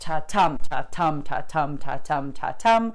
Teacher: the syllables go unstressed, stressed, unstressed, stressed, unstressed, stressed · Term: iambic pentameter